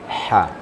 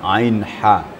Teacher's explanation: Termasuk huruf halaq namanya. Huruf halaq yang sifatnya adalah tawasud di tengah-tengah tenggorokan.